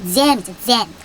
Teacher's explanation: J는 혼자 앞에 있을 때 지읒 소리가 나는데요. 입술을 쭉 내밀고 끈적하게 지읒하고 헤어줘야 됩니다.